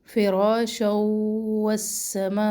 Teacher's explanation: مد ہے یہاں پر 2 الف کے برابر لمبا کرے